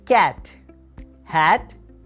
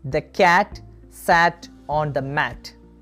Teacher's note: Here, the tongue will be in a low position and in front. Mouth will be wide open.